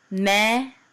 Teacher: in a Sephardic pronunciation or more Israeli pronunciation it'd be just more like meh